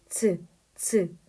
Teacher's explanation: 즈 발음을 해보면 스보다는 뭔가 한번 막혔다가 나는 소리인데 그드브처럼 완전히 끊기는 음이 아니라 뭔가 뒤에 스 하는 스치는 소리가 나요. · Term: 파찰음